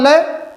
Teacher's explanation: जब हम लय का उच्चारण करेंगे तो जो हवा है ना हमारी जीभ के बगल वाले साइडों से निकलेगी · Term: पार्श्ववर्ण